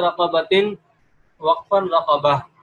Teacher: یہ صرف ایک حرف میں، وہ بھی گول تا جسے تائے مدورہ بھی کہا جاتا ہے، عربی کے اندر اس کو تائے مدورہ سے تعبیر کرتے ہیں۔ تو گول تا جو ہوتی ہے یہ وقف کی حالت میں ہا ہو جاتی ہے